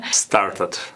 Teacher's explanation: The word start, that R before the T also should be pronounced, and you made it silent.